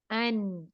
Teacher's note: अगर मैं नाक बंद करूं तो मैं I can not pronounce the नून · मैं अपनी साउंड नाक में लेके जा रही हूँ, क्या नहीं कर रही, लॉन्ग नहीं कर रही, तवील नहीं कर रही, रेजोनेट नहीं कर रही, ठीक है ना।